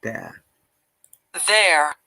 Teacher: according to the british ipa we do not pronounce the r sound in this case